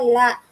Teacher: இங்க லா வந்து மேலன்னத்தோட நடுப்பகுதிய தொடுது. மேல் அன்னத்தின் நடுப்பகுதியை.